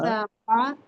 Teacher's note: قاف ہاں حروف مستعلیہ ہے، اس کو موٹا پڑھیں گے